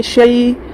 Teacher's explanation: یا ساکن سے پہلے شین کے اوپر زبر ہے، نرم آواز کے ساتھ جلد ادا کریں گے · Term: یا لین